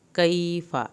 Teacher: کیف یا ساکن کی وجہ سے ہم نے اس کو تھوڑا سا کھینچا